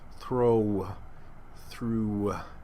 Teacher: that woo gets lost in the vowel throw through and it becomes a diphthong